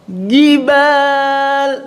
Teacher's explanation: Maka jim itu betul-betul tidak ada nafas terlepasnya.